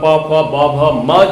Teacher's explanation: प वर्ग मतलब प फ ब भ म जो है इनका उच्चारण स्थान होष्ठ है।